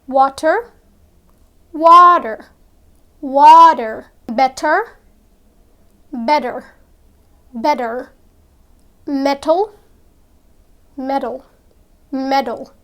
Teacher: You see, in English, there are a lot of words that contain T, but when it comes to pronouncing them, you would notice that natives often pronounce the T as D. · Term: T sounds often like D